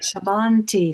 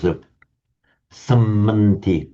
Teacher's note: They're both heavy syllables because the short vowel followed by a double consonant, but the vowels themselves are short.